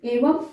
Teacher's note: अनुस्वार लगा हुआ है तो इसकी साउंड म में आएगी